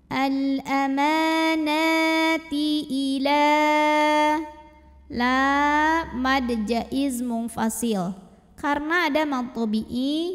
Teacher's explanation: karena ada baris fathah tegap di atas huruf nun maka kita bunyikan panjang Nun nya 2 harokat